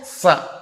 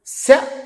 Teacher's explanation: సకారం దంత్యం శకారం తాలవ్యం రెండిటికి ఎంత తేడా ఉంది